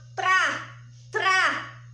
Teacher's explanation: Quando eu falo tra, sai o som do T e do R, o R tremido